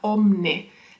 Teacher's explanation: Por ejemplo, aquí tenemos la palabra homine, que es una palabra del latín que significaba hombre, y a lo largo de los siglos fue cambiando y ahora tenemos la I pasó a la palabra omne. La I dejó de pronunciarse y empezó a pronunciarse omne. Como ven, eso es un cambio de un sonido, el sonido I.